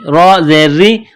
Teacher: را کے نیچے زیر ہے تو را کو باریک کرنا ہے